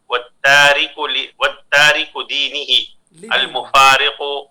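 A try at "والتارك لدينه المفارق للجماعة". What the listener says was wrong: اضافے کے ساتھ، لام کے اضافے کے ساتھ. والتارک لدینہ.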